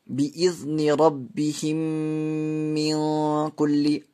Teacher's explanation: میم کو میم سے ملا کر گنہ کے ساتھ پڑھیں گے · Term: ادغام شفوی